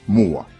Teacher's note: La glide W entre 2 voyelles mouillées comme O et A.